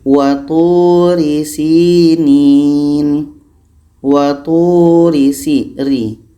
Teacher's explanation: Ra baris di bawah. Pangkal lidah kita ini tidak terangkat. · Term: tarkik